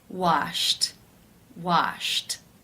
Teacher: the final sound in infinitive form is sh the unvoiced sh sound since it is unvoiced it is case 1 where the ed is pronounced as a t